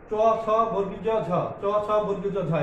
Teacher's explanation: এই প্রশস্ত দন্তমূলীয় ধ্বনি উচ্চারণের ক্ষেত্রে জিহ্বা সামান্য চ্যাপ্টা হয়ে শক্ত তালুর অগ্রভাগকে স্পর্শ করে